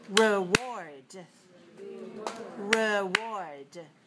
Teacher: notice that the first syllable is weak we don't say re we say r r just like the